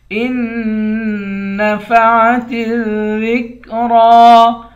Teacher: حمزے کو تشدید والے نون کے ساتھ ملائیں گے، جزم والے نون کے ساتھ نہیں ملائیں گے، اور حمزے کو نون سے ملا کر نون پر اخفا کریں گے۔